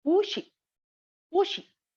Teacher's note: So pu will be pronounced in second tone, that is the high rising pitch. So it will be pu she, pu she.